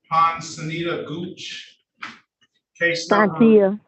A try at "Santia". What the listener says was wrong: The P is silent.